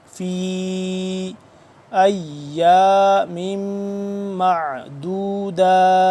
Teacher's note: فا یا مد زیر فی 2 سے 3 الف کے برابر اس کو ہم لمبا کریں گے